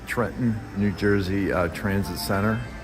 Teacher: the retroflex R is immediately adjacent to the T in the word and ends up affecting it by causing it to be retracted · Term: anticipatory assimilation